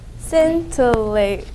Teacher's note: There are 3 syllables and the first syllable gets the accent.